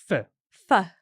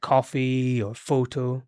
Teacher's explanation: I'm putting my top teeth on my bottom lip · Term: F sound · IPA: /f/